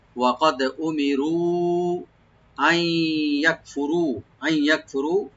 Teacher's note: right দিয়ে খালি normal করে পড়বেন, উ মি কোনো টান নাই, রু এখানে রা ডিপ করে তিন আলিফ পর্যন্ত টানতে হবে , ওয়াকাদ উমিরু আই ইয়াকফুরু, আই ইয়াকফুরু, আই এখানে নুন সাকিন